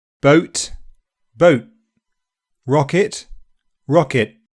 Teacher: An unreleased /t/ is where you don't let any air out at the end